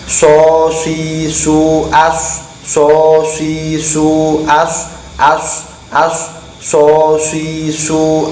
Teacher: ujung lidah di belakang ujung gigi depan atas dan bawah ada suara desis dan bibir Harus mocucu atau oncom sosis Roads oshizu adsos isu